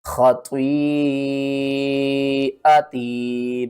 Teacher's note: مد متصل ہے 5 الف کے برابر، آپ نے اس کو بھی کھینچ کر پڑھنا ہے